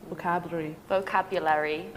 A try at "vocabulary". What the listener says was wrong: So there's one more syllable.